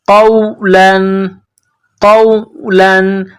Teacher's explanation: قاف نقطوں والا قاف ہے، اس کو موٹا کرنا ہے